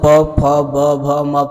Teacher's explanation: जब हम प फ ब भ म पढ़ते हैं तो हमारा ओठ आपस में सटता है, इसी कारण से इसका उच्चारण स्थान ओष्ठ होता है।